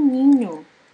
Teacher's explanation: é uma consoante nasal palatal sonora